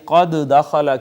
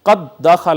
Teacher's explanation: اگر ایسا ہو کہ پہلا حرف ساکن اور دوسرا متحرک ہو تو لازمی طور پہ اور واجب طور پہ ہم نے اس کو ادغام کرنا ہوتا ہے۔ اب پہلی دال ساکن تھی، دوسری متحرک تھی، پہلی کو دوسری میں ضم کر دیا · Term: ادغام واجب